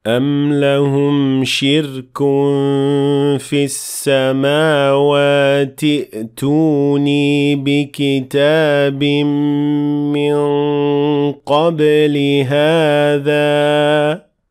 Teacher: I simply ignored Hamzat al-Wasl at the beginning of the word and I went directly to the second letter, which is also a Hamza